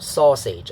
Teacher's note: This one have this thing, so it's a noun and it's countable because of the and then pitch pattern, so stressed syllable falling on the first syllable, so it's da da. The second syllable is unstressed and has a lower pitch.